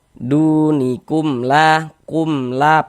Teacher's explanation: Karena dia izhar maka dibaca jelas. Bunyi mim sukunnya kita baca jelas. Kemudian tidak kita gunahkan, tidak kita dengungkan, maka baca pendek saja. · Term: izhar syafawi